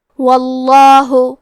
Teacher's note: لفظ الجلالہ کے لام کا حکم ہے تفخیم، تو ہمیں حرف اللام کو موٹی آواز میں پڑھنا ہے